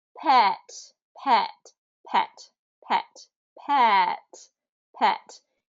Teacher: it's still the same e sound but I can can hold it long I can make it short um the term short vowels doesn't mean how long it's held